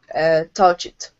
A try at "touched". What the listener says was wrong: Okay, take out that vowel. Instead of touch it, it's touch.